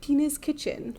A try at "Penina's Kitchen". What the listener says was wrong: Oh, well, the way you said it sounded like Penis Kitchen.